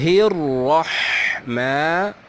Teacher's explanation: الرحمن، را کو موٹا پڑھیں گے کیونکہ اس پر زبر ہے